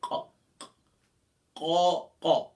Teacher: بالکل جو گلے کی طرف ہے، اور تالو کا نرم حصہ، یعنی زبان کی جڑ کو اوپر تالو کے نرم حصے پر لگائیں گے تو یہاں سے قوف ادا ہوگا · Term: قوف کا مخرج